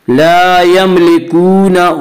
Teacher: ला यमलिकून, वाव मद्दा, वाव मद्दा वो वाव जो साकिन हो और उससे पहले पेश हो। वाव मद्दा को एक अलिफ की मिकदार खींच कर पढ़ेंगे